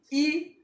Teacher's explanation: ई में देखिए आपका मुख चौड़ा हो रहा है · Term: अगोलीय